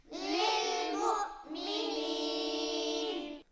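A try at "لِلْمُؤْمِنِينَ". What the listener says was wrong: लिलमुमिनीन, लाम हिलेगा नहीं, यहाँ पर मिला के पढ़िए।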